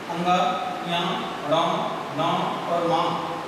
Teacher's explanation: इन सभी वर्गों का अंतिम वर्ण अंग, या, ण, न और मा, इन सभी वर्गों का वर्णों का उच्चारण स्थान नासिका है। ये नाक की सहायता से बोले जाते हैं, इनको बोलते हैं नासिक के वर्ण।